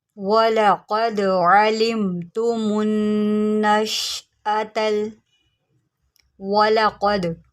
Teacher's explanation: قاف کو موٹا کریں، دال کے اوپر قلقلہ کریں، قد اس کو ہم قد نہیں قد پڑھیں گے.